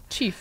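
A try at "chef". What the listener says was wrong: Шеф. шеф. Я слышала произношение chief, но шеф.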